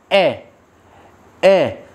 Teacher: बच्चों देखो हमारे गले में अलग अलग स्थान पर, जैसे यहाँ पे कंठ होता है, कंठ, अगर हमने कै बोला या हमने ए बोला, ए बोल के देखिए, ऐसे हाथ रखिए, ए, जब हम ए बोलते हैं तो हमारे कंठ को टकराकर हवा निकल जाती है। ए, ना होठ से, ना दांत से, ना तालू से, ना मूर्धन्य से, कंठ से। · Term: कंठ ध्वनि